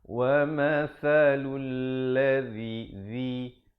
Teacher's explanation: Hujung lidah itu dia lebih keluar lebih sedikit daripada huruf zal.